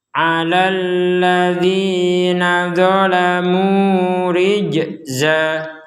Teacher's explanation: Rij ini juga harus dipantulkan. Jadi jangan sekedar rijza gak ada pantulan, maka itu kurang sempurna.